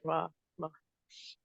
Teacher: They don't move forward. Because when our lips come forward, the sound becomes oh, oh.